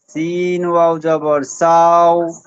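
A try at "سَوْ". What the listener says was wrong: একটু ভুল হচ্ছে, সাও এই টানটা হবে না, সাও।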